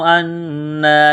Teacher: نون مشدد پر غنہ کریں گے، آواز ناک میں چھپائیں گے